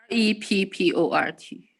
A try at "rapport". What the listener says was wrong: RE. Rapport. No, no, rapport. It's, you don't pronounce the T, it's rapport. Rapport.